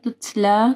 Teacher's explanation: تا کے اوپر تا ساکن ہے تو یہاں پہ ہمس ہوگا